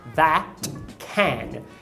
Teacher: Quando ele diz that e can, eu percebo também uma redução para o schwa. As palavras that e can são pronunciadas com ash